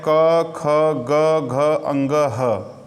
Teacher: ये वर्ण कंठ से बोले जाते हैं, इसलिए इन्हें कंठ वर्ण कहते हैं